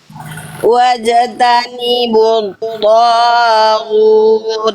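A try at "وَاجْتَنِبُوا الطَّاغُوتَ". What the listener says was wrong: Tohnya jangan kepanjangan. Togu jangan kepanjangan. 2 harokat aja. Tadi Bunda baca lebih dari 2 harokat.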